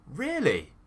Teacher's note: So, my tone is going up. So, we're using that stress on the first syllable to go even higher. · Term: rise, fall tone